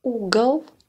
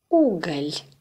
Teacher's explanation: The consonant is pronounced with the middle of the tongue raised towards the roof of the mouth, as in the pronunciation of the vowel E. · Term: soft